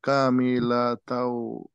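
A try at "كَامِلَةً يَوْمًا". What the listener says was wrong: না, ইয়া আছে, কামিলা তাইয়াউমা।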